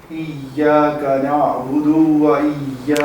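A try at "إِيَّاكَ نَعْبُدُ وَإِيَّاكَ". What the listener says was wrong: ابھی بھی تھوڑا سا لمبا ہو گیا.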